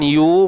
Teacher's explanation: Kemudian ya baris depan, yu muncung bibir kita sebab baris depan yu.